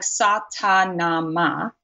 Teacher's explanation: you'll notice that the tip of the tongue targets right behind the two front teeth